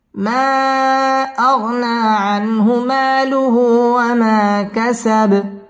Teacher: আগনা মধ্যে তবাই 1 আলিফ টেনে পড়তে হবে। আনহু ইজহার গুন্না ছাড়া স্পষ্ট করে পড়তে হবে।